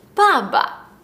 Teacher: For example, the colloquial word for father in Chinese is ba. However, instead of it being ba ba, the second fourth tone is dropped to make it ba ba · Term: fifth tones